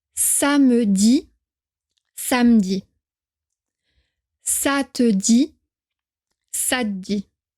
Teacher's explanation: Écoutez bien la prononciation pour les 2 premières personnes du singulier. Le son E disparaît un peu.